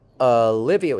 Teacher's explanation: Olivia is 4 syllables with the stress on the second syllable. · Olivia, starting with and ending with a schwa.